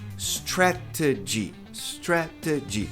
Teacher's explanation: T t t t tá ladeado por vogal. A sílaba tônica é o stret. Então esse T pode ser pronunciado como re.